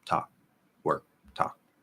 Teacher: the default thing that a K would do at the end of a word would be it would stop